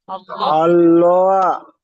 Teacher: আল্লাহ শব্দ পুর মুখ গোল করে পড়বেন।